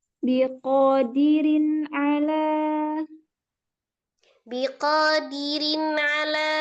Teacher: Tapi kalau diayun dirin kan seolah rinnya tebal rin, tapi harusnya tipis. Dirin ala kan alanya yang kepisah.